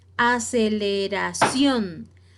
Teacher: o vocal estrictamente debe llevar acento veamos estos dos ejemplos aceleración la palabra o la sílaba tónica más fuerte es la última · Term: palabra aguda